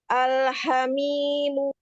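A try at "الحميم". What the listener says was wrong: Selesaikan harokatnya walaupun satu-satu harokat, selesaikan. Panjangkan sedikit lagi, itu terlalu cepat. Al-hamimu. Mu. Sampai U-nya terdengar. Al-hamimu.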